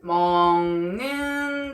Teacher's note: 먹는다는 먹는다로 발음이 되죠? 비음이 아닌 기역이 비음인 니은과 만나서 비음인 이응으로 바뀌었습니다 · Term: 비음화